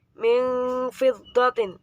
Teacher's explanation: disebut dengan bacaan ikhfa sebab nun sukun bertemu dengan fa